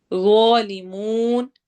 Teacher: وا کو موٹا پڑھنا ہے اور لمبا کرنا ہے اور مد العارض سکون کرنی ہے.